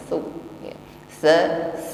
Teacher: huruf sa tipis pertemukan ujung lidah dengan ujung gigi sari atas.